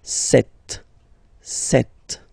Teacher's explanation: P is not pronounced. Okay, it doesn't exist, so you get this set sound